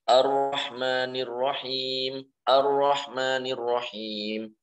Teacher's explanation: Maksudnya takrir ini adalah dibaca dengan tanpa banyak getar. Jadi ra memang sifatnya bergetar, tapi jangan banyak-banyak. Tidak boleh dibaca Ar-Rahmanir-Rahim sampai 3, 4, 5, dan seterusnya.